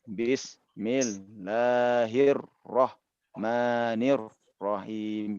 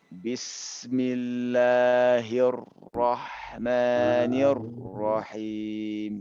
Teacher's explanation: anak tidak memutus siulan dari sin itu, ya, siulan dari sin itu kecuali telah sampai kepada mim